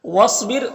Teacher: صاد حروف مستعلیہ میں سے پر پڑھیں گے، اور یہ ساکن حرف ہے تو پیچھے والے متحرک حرف واو سے مل کر پڑھا جائے گا۔